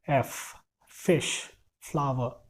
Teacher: आपके ऊपर के दांत और नीचे के होंठ दोनों को टच करना है, और उससे आपको एयर फ्लो को नैरो करना है।